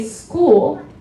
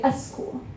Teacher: As the vowel doesn't follow it, Persian speakers will normally put a vowel in front of it. And so that's the reason why, even though both Americans, both English speakers and Farsi speakers can say S and K, why English speakers can say school, but a lot of Persian speakers will say a school.